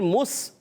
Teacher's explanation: میم کو سین سے ملائیں گے، سین سیٹی کے ساتھ ادا ہوگا. سین کا مخرج بتا دوں، سین ادا ہوتا ہے زبان کی بالکل باریک نوک ثنائے سفلی ثنائے علیٰ یعنی دونوں دانتوں کے اندرونی کناروں سے، ٹھیک ہے.